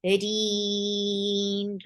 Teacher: raw will be light and it will be 4 counts long, and give the wasut at the end on noon because you are giving sukoon, temporary sukoon on noon because you are creating waqf.